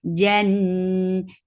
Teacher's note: This kunna is akmal, so keep the sound in your nose for a longer time.